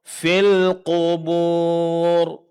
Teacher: Huruf qaf ditebalkan karena dia huruf istilla.